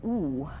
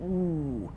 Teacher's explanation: that's a very rounded vowel